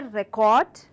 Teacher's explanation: So, when I say record, I am stressing on the first part of the word, it is a noun